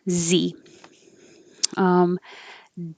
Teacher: it's like an S but with sound and you need lots of airflow.